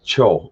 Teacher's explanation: it's kind of a blend of uh like a t sound and an sh sound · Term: fricative plosive